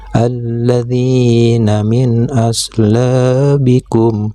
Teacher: Huruf yang ditunjuk dengan anak panah yang berwarna kuning itu adalah nun sukun atau nun mati. Untuk nun sukunnya itu harus dibaca jelas seperti huruf N. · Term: idhar